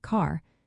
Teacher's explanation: Some British English speakers dropped the R sound in words like car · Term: drop the R sound